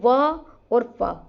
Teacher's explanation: फ होठ भी लग रहे दांत लग रहे हैं हमारे होठों पे आके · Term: दंतोष्ठय वर्ण